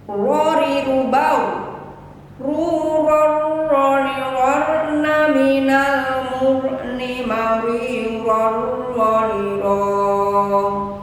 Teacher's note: pengucapan ro apabila berharokat fathah dan dhammah harus tebal dan bibir maju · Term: huruf isti'la